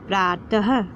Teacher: अह की ध्वनि, ह की ध्वनि इसमें से आती है विसर्ग यानी कि अह की मात्रा लगाने पर